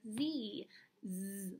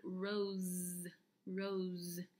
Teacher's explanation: our letter S makes a voiced sound of Z, just like Z, Z, like rose, rose